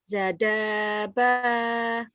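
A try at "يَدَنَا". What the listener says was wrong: yadaba titiknya di atas, Bu. Titiknya naik. Yadana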